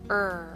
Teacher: your mouth curl the tip back and make the center rise this is a tense position for the tongue and remember R is a long sound